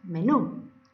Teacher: En la última sílaba está el acento. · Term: Palabras agudas u oxítonas